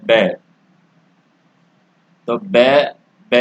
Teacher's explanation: ये दांत और होठों से बोला जाता है, यानी यहाँ पर दांत काम आते हैं और होठ भी काम आता है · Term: दंतोष्ठ